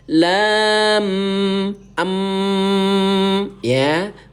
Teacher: Bunyi amnya bunda tahan 2 ketukan. Ingat ya, mim bertasdid hukum tajwidnya menjadi gunnah. Ya, tahan 2 ketukan baru diikuti dengan huruf mi.